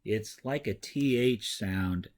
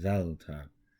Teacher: So it's like a TH sound, just a little bit softer. The tongue kind of goes behind the two front teeth, and you make delta.